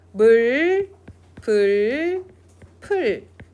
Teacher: 으라고 하는 평평한 입술, 평순 모음이 근대국어를 거치면서 원순 모음화가 돼요. 그래서 입술이 동그래는 우 발음으로 바뀝니다.